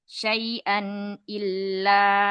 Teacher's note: huruf lamnya jangan ke hidung ya